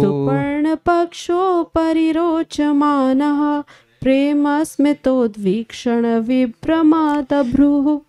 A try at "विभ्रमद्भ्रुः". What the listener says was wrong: विभ्रमद्भ्रुः होना चाहिए ना, आ बड़ा क्यों ले रहे हो आप?